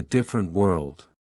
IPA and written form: ˈdɪf.ər.ənt wɜːld (Different world)